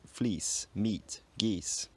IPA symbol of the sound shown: i: